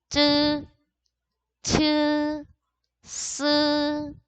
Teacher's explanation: 스 같은 경우에는 SH랑 마찬가지로 닿지는 않고 가까이서 세게 발음을 해주시면 되고요